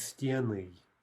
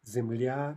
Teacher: the stress only jumps back onto the stem in the plural form, sort of only in one direction. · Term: Stress jumps back